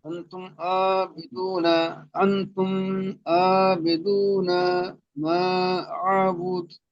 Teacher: মিম সাকিনের পরে বা মিম ছাড়া অন্য অক্ষর আইন এসেছে তাই মিম সাকিনকে বিনা গুণনায় পড়তে হবে, কি ইজহার স্বাভাবিক বলে।